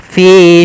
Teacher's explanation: adanya kasrah bertemu dengan ya panjangnya dua harakat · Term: mad thabi'i